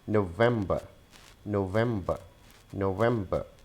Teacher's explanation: Again, we are adding a schwa sound and removing the R sound from the end.